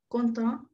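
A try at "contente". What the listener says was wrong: Content, con la T marcada.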